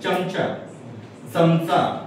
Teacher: जर जिभेचा शेंडा जर तुम्ही टाळूला लावला तर चमचा, म्हणजे त्याच्यामध्ये य गाईचा आल्यासारखा भास होतो. जीभ जर तुमची टाळूला लागली की गाईचा य जोडल्यासारखा भास होतो.